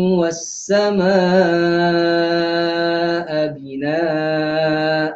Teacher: wassamaa binaa wassamaa itu mad muttasil. Bacaan dia antara empat ataupun lima harakat. Wassamaa kemudiannya binaa itu pun sama juga.